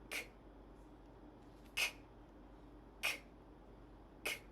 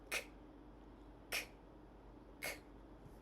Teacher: mouth slightly open, back of the tongue touches the soft palate